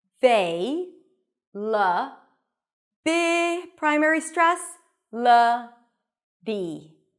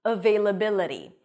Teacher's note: The T is a flap T in American English, it sounds a little bit like a D.